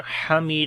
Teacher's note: Hamid, ha we read from the middle of the throat